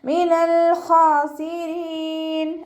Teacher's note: അലിഫ് സ്വൈറ കൂടെ വന്നിട്ടുണ്ട്, 2 count നീട്ടിക്കൊടുക്കുക. റോ കെസ്റ ആയതുകൊണ്ട് നമ്മൾ ലൈറ്റ് ആക്കിയിട്ട് ഉച്ചരിക്കുക കേട്ടോ. രീ എന്നുള്ള സൗണ്ട് കൊടുക്കുക.